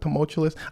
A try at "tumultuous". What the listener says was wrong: I think you're using it right, but saying it wrong. You're saying tumultuous? That's not what you said. See, there's an L that you're like sneaking in there somewhere. No.